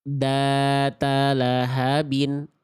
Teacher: makhraj huruf dzalnya udah tepat, tapi ngalir suaranya nggak dapet dia